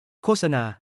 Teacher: The word for advertisement โฆษณา loses its final T sound in the first syllable,